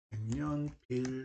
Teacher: 그럼 기억이 뭘로 발음된다? 이응으로 발음됩니다. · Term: 비음화